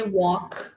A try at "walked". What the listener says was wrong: ถ้าเป็นอย่างเงี้ยก็คือเสียงเคอะถูกต้องแต่ถ้ามีการเติม ed เนี่ยตรงนี้จะเป็นเสียงเถอะ walked.